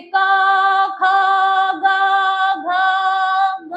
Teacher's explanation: जब हम क बोलेंगे तो कंठ से आवाज आएगी, कंठ से क ख ग घ ग, है ना।